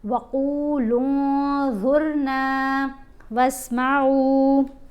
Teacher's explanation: پھر لام کو جب نون سے ملائیں گے تو احفا کریں گے، یعنی نون کی آواز کو ناک میں چھپا کر پڑھنا ہے